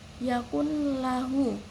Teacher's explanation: lamnya itu dibaca tanpa ada dengungan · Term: idom bilahuna